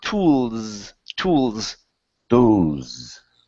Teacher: Now when you come down to the S, it's a Z sound.